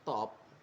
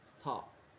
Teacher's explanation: Bunyi ti di kata top lebih keras dibanding di stop tapi maknanya tetap sama